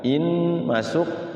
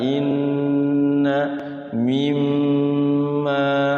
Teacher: Jadi gunnahnya itu 2 sampai 3 ketukan. Jadi paling kenapa dia sebenarnya aturannya 2 ketukan, tapi prakteknya 3.